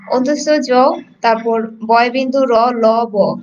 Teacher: তো দেখো, এই যে অন্তস্থ জ, তারপর বয় বিন্দু র, ল, ব, এগুলো এগুলো যখন আমরা উচ্চারণ করি তখন কিন্তু আমাদের মুখটা সম্পূর্ণরূপে খোলা থাকে না, আবার একেবারে বন্ধও থাকে না, আর বাতাসটাও একেবারে বন্ধ থাকে না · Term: অন্তস্থ বর্ণ